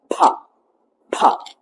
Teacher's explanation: പായ്ക്ക് ഒരു ഹാ ശബ്ദം കൊടുക്കുക